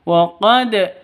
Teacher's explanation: wa qad ini qalqalah sughra karena ada di tengah